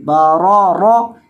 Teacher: آ رہی ہے، یعنی دو مرتبہ را آ رہی ہے اور دونوں دفعہ را کے پر زبر ہے، اور دونوں مرتبہ را کو موٹا کر کے پڑھیں گے